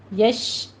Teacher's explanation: شین کی آواز منہ میں پھیلے گی، تفشی ہوگی اس کے اوپر